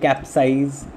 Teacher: it is not the syllable cap that is stressed, it is the word size, syllable size that is stressed.